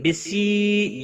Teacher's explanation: یا مدہ ہے، 1 الف کے برابر کھینچ کر پڑھیں گے